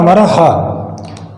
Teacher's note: कंठ ध्वनि है, उच्चारण स्थल के आधार पर कंठ है, घोषत्व के आधार पर सघोष है और प्राणत्व के आधार पर महाप्राण है।